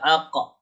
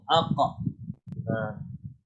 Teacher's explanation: Kalau qaf makhraj huruf qaf dia bahagian kerongkong. Jadi kita cuba kembalikan dia punya makhraj di kat situ.